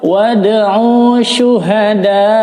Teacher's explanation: ini tidak dibaca panjang karena ada pengecualian, yaitu ada huruf berharakat sukun sesudahnya, maka tidak dibaca panjang. Jadi jangan dibaca wad, tapi wad langsung.